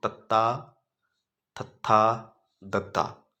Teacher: ਦੰਤੀ ਧੁਨੀਆਂ ਉਹ ਹੁੰਦੀਆਂ ਨੇ ਜਿਨਾਂ ਧੁਨੀਆਂ ਨੂੰ ਉਚਾਰਨ ਸਮੇਂ ਸਾਡੀ ਜੀਭ ਦੰਦਾਂ ਦੇ ਨਾਲ ਲੱਗਦੀ ਹੈ। ਹੁਣ ਇਹਨੂੰ ਬੋਲ ਕੇ ਦੇਖੋ ਦੇਖੋ ਤਤਾ ਥਥਾ ਦਦਾ ਜਦੋਂ ਆਪਾਂ ਇਹਨਾਂ ਧੁਨੀਆਂ ਨੂੰ ਬੋਲਦੇ ਆਆਂ ਸਾਡੀ ਜੀਵ ਦੰਦਾਂ ਦੇ ਨਾਲ ਲੱਗਦੀਹ ਅੰਦਰਲੀ ਸਾਈਡ ਤੋਂ ਉਹਨੂੰ ਕਿਹਾ ਜਾਂਦਾ ਦੰਤੀ ਧੁਨੀਆਂ।